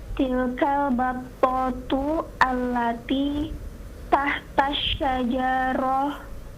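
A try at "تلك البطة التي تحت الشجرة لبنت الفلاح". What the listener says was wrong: Hidupkan semua harakatnya. Tahta syajarati.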